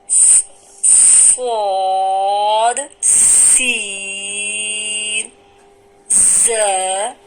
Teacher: اوپر نیچے کے دانتوں کو ملا کر 3 حروف کو ادا کیا جائے گا، جس میں سے صاد کو موٹا کر کے ادا کریں گے، سین اور زا کو باریک ادا کریں گے۔